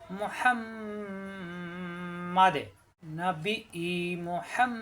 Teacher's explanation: এখানে অক্ষ হলে দালে সাকিন হয়ে যাবে, দাল সাকিন কলকলা হয়ে যাবে